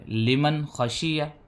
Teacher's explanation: نون کی آواز کو بغیر غننے کے پڑھیں گے۔ اس کا نام اظہار ہے۔